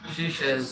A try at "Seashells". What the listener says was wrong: C. Like the letter C. Not she. Seashells. Shells. What's this letter? C. C. Seashells.